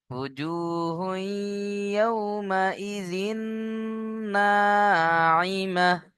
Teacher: তানবিনের পরে আবার নুন এসছে, তাহলে তানবিনকে নুনের সাথে মিলিয়ে গুণনা করতে হবে। ঈদগামে ইয়ার মালুনের ঈদগামে নাকিস।